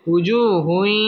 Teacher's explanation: উজুহুমা ওয়াও ঠোঁট গোল করিয়া পড়তে হবে উজু পেশের বাম পাশে জাজমলা ওয়াও মদের হরফ এক আলিফ টেনে পড়তে হবে